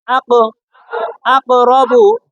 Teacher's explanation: কফের সাকিন ধাক্কা দিয়ে পড়তে হবে তাহলে কি হবে আক তাহলে কফের উপরে সাকিন থাকলে কলকলা করে